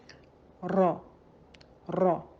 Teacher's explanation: اور یہاں جو خاص بات ہے، ہماری زبان کا اگلا حصہ تالو سے لگے گا مگر زبان کی نوک جو ہے وہ نہیں لگے گی۔ زبان کی نوک وائبریٹ ہوگی اور یہ اس طریقے سے یہ حرف را ادا ہوگا۔ را را، یہ جو ایک وائبریشن آپ سن رہے ہیں یہ اس کے صفات کا حصہ ہے اور اسے تقریر کہتے ہیں، ریپیٹیشن۔